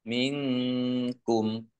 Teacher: Nun sukun bertemu dengan huruf kaf, bacaan ikhfa dibaca samar-samar. Kemudian kumnya dibaca wakof dan pendek karena tidak ada tanda panjangnya.